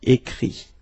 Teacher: Remember that phonetically this final T doesn't exist.